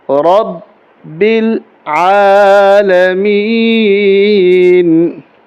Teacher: الحمد کافی دوست پڑھتے ہیں الحمد، الا نہیں ہوتا، یہ لفظ ہے حمزہ لام زبر الحمد، ہا ہے حلق سے نکلے گا، الحمد، دو نہیں ہوگا، دو ہوگا، الحمد للہ، الحمد للہ رب العالمین، رب العالمین۔ را کو موٹا کر کے پڑھیں گے اور با کے اوپر تشدید ہے، با کے اوپر سختی کے ساتھ ملائیں گے، با کو لام کے ساتھ اور را کو با کے ساتھ ملائیں گے اور زور دیں گے رب العالمین۔